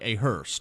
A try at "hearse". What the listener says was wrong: There's no T in hearse.